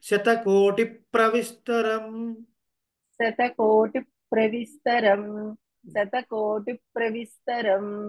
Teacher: ఆ ప్రా ద్వికం కాబట్టి స్ట్రెస్ ఉండాలండి